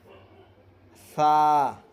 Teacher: سا، سا کا مخرج ہے سرا زبان اوپر کے دونوں دانتوں کے سرے سے مل کر سا ادا ہوتا ہے۔